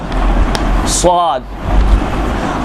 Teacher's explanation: ऊपर के दो दांत और नीचे के दो दांत, इनके बिल्कुल दरमियान की जो जगह है, इस मकाम पर ज़बान को ले जाकर छोड़ दें या निचले दो दांतों से टकरा दीजिए।